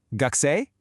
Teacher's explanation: Formally, it's gakusei desu ka? But casually, you just say the noun with that rising intonation.